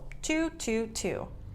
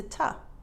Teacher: in real life t-o is often reduced to ta